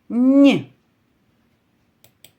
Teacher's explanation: останній звук нь це приголосний м'який позначаємо двома рисочками